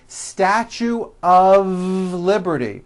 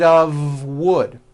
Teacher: even though the word of is spelled with an F we pronounce the word of with a voiced v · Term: of exception